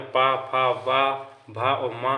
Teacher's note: पा वर्ग का उच्चारण ओंठ से होता है।